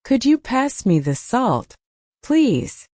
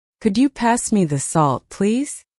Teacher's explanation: Listen to the way my voice rises on could you, and falls gently at the end.